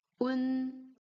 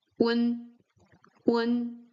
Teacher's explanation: Here the u comes shorter and it melts together with the n. Un, un, chi, un becomes chun, chun, chun, chun.